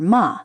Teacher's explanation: Finally, there is the neutral tone, called qīngshēng. This is a light, unstressed tone without its own full contour, often found on particles like the question marker ma, or the second syllable of words.